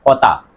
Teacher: এ থটা হচ্ছে মহাপ্রাণ ধ্বনি। বাতাসে চাপটা বেশি লাগে।